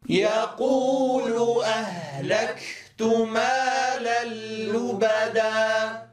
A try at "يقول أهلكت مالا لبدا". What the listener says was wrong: لا نترك فاصلا زمنيا بين شدة الكاف وهمسها، فلا نقول أهلكت، واضح؟ وإنما إذا ما انقطع الصوت نتيجة غلق المخرج في الكاف، يعني أتينا بصفة الشدة في الكاف، مباشرة نتبعها بالهمس، فنقول أهلك أهلك أهلكت أهلكت، ولا نقول أهلكت.